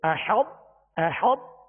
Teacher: یہ حا کو طا سے اس طرح ملائیں گے کہ طا کی جو صفت جو پر ہونے کی جو خوبی ہے وہ پہلے ظاہر ہوگی۔ احط، احط یعنی حا طا سے پہلے ملے گی۔ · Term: ادغام متجانسین